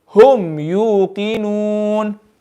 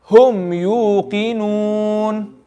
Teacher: The mim sakin will be no ghunna. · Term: idhar shafawi